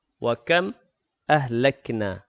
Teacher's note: Wa kam ahlakna mim mati bertemu dengan hamzah. Izhar syafawi, jelas bacaan mim mati.